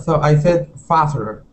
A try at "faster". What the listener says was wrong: Yeah, you didn't pronounce that T. Here we want to pronounce that T, saying faster.